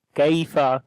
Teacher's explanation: Kaf we read in light sound, on the ya we read softly. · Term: yaleen